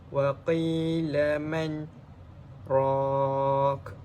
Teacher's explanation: Sakta ni ialah diam sejenak sekitar 2 harakat dengan tidak memutuskan atau berganti nafas. Dalam arti kata lain, kita meneruskan ayat tanpa menggunakan nafas yang baru.